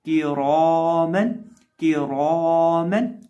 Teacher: रौ के ऊपर ज़बर है, और साथ अलिफ को भी मोटा करेंगे क्योंकि वो मोटे हरफ के बाद है